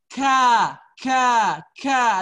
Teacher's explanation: bedanya kalau kaf dia hurufnya ada udara yang keluar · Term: hamas